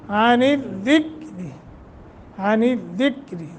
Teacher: دال را باریک چونکہ نیچے کسرہ ہے